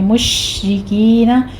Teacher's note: شین پر تفشی ہوگی، آگے را باریک پڑھی جائے گی اور کاف کے بعد یا مدہ ہے تو یہاں پہ ہم